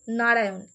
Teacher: এই মূর্ধন্য নটা যখন উচ্চারিত হচ্ছে অন্তুস্থ অ এর পরে, তখন আমাদের জিভটা ভাঁজ হয়ে মূর্ধাকে স্পর্শ করছে